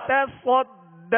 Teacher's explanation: تصد میں آگے یا ہے, یہ یا نہیں پڑھی جائے گی. ٹھیک ہے, بعض حروف ایسے ہیں جو لکھے جاتے ہیں پڑھے نہیں جاتے لہذا یہ یا نہیں پڑھیں گے.